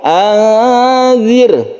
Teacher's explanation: Kemudian nun bertemu dengan zal, ini adalah ikhfa hakiki. Ini kita panjangkan, membacanya kita samarkan.